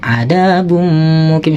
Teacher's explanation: Jadi suaranya tanwin dimasukkan ke mim pada lafadz mukim ini. Jadi harus dimasukkan suara tanwinnya dan disertai dengan dengung, ada bum mukim, seakan-akan kayak ada tasdidnya gitu.